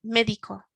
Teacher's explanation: the front of the word has got the strength on it